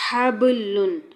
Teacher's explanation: ہونٹوں کے مخرج پر یہ ساؤنڈ لائیے، حبلن۔ با پر قلقلہ ہو رہا ہے، آواز اچھل رہی ہے۔